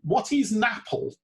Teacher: the linking of the n onto the word apple